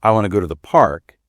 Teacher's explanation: you listen for how want to often sounds like wanna and the rhythm, and you repeat that until you can do it naturally.